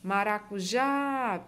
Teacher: Nesses casos aqui, ela recebeu acento, tá certo? Maracujá, perceba que a sílaba forte é o já